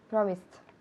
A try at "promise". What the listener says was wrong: No, al final, no hay nada al final. Promise. El último sonido es una S. Okay, so se escribe P-R-O-M-I-S-E. Okay, so promise. Promise. En infinitivo en presente, el último sonido es una S. Promise. Repeat, promise.